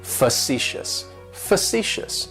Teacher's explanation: it's like you're just saying the letter C C yes and that first syllable has that schwa that sound · facetious has three syllables and the stress is on that second syllable